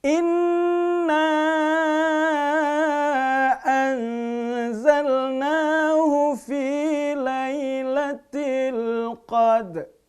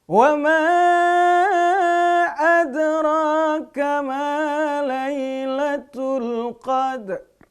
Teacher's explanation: Al-Qadr ini juga bacaan yang dibaca raum, setengah harokat. Karena ada huruf yang disukunkan, yang sebelumnya juga berharokat sukun ya.